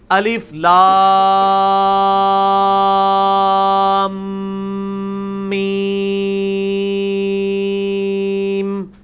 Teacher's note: غنہ کہتے ہیں آواز کو ناک میں لے جانا، اور غنہ بھی ایک الف کے برابر ہوتا ہے